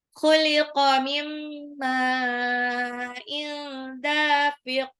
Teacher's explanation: nun sukun ketemu mim itu idgham bi gunnah ya. Jadi di lebur tapi ditahan. Mim ma'in, jadi bukan cuma mimma, tapi mimma ma'in itu panjang.